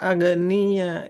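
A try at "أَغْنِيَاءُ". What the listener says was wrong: nahnu au. Huruf ghainya mengalir suaranya awniya. Wa nahnu awniya. Tidak ag, tapi au. Wa nahnu awniya. Ditekan ada hamzah di akhir Ibu. Awniya. Awniya. Tidak ag, au. Nah, au. Jadi nggak ada bunyi e-nya. Awniya. Hamzah sukun di akhirnya dibaca. Awniya. Awniya.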